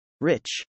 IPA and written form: r-ˈɪ-tʃ (rich)